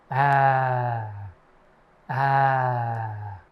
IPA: æ